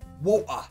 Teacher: The T stops in the throat. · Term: glottal T